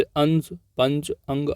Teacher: अनुस्वार एक व्यंजन ध्वनि है, इसके उच्चारण में नाक से अधिक सांस निकलती है और मुख से कम